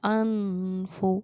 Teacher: गुन्ना में आवाज़ नाक में जाती है, लेकिन इसमें बिना नाक के हम इसको छिपा कर पढ़ते हैं। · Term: इख्फा